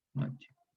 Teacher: hay dos palatales, la yod y la che, esta palatal sorda, entonces se produce un fenómeno de asimilación. La che absorbe a la yod, hay dos palatales, queda finalmente noche.